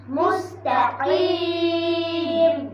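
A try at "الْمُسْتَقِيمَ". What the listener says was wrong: কিম এখানে তিন আলিফ টান দিতে হবে মুস্তাকিম।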